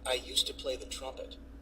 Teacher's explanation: D is silent in used to. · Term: D silent